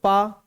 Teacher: पा जब बोल रहे ना, होंठ आपस में जुड़ रहे हैं, दोनों होंठ आपस में जुड़ रहे हैं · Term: ओष्ठ्य